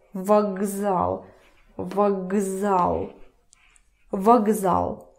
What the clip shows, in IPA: vaGzal